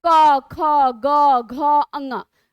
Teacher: आवाज कहां से निकाल रही है गले से निकाल रही है ना यानी की कंठ का आपने प्रयोग किया